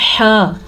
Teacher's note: یہ ہا سینے کے اندر سے نکلتی ہے